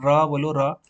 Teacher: तो र में आपकी जीभ मुड़ गई है ऊपर से उत्क्षिप्त व्यंजन में उच्चारण जी बेलन की भाति लपेट खाती है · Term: लुंठित व्यंजन